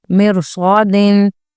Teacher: اس میں رو ساکنہ کے بعد حروف مستعلیہ صاد ہے تو ادھر رو کو پر ہی پڑھیں گے